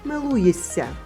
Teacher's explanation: Си поглинає ши і маємо си подовжений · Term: поглинання